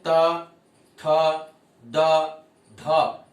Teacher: दंत्य में त, थ, द, ध, यहां दांतों से जाकर के जीभ टकराती है।